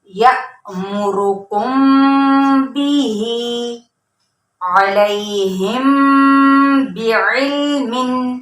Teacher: बा पढ़ते वक्त होंठों को सख्ती से मिला देना है, तो तब जाके हमारा इख्फाए शफवी अदा होगा।